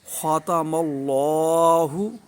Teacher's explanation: خا کو پر، ٹھیک ہے، تا کو باریک پڑھیں گے